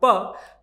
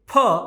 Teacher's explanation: अल्प प्राण का मतलब है जिन वर्णों के उच्चारण में मुख से वायु कम निकलता है, और महाप्राण का अर्थ है जिनमें वायु अधिक निकलता है